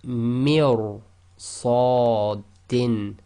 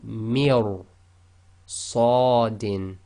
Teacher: So ra sakin preceded by a kasra sound but followed by one of the tafkheem letters. In that case the ra will still be heavy, tafkheem.